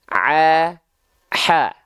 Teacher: Ain dan ha kecil itu dilafalkan sama dari bagian tengah tenggorokan kita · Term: huruf ain